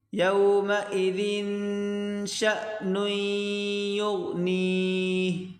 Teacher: شین الف نہیں بلکہ شین حمزہ پڑھیں گے، جھٹکا دے کر پڑھیں گے ، شین حمزہ زبر ش، یومئذ شأن یغنیہ، یومئذ شأن یغنیہ،